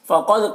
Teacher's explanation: कौफ को पुर पढ़ेंगे, दाल में कलकला करेंगे